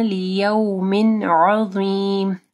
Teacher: لیو نہیں پڑھنا، لیوم عظیم. عین کو واضح پڑھنا ہے، ضو کو موٹا پڑھنا ہے